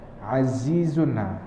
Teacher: Zai lidah dalam, jangan tubik dah.